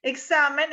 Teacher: examen es grave porque se acentúa en la penúltima sílaba y tiene la terminación obligatoria de las graves, entonces no lleva tilde.